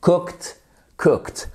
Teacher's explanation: comment on prononce le ed comme un T